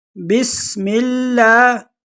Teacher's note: سین میں سیٹی کی آواز نکالیں گے اور لفظ اللہ کو باریک پڑھیں گے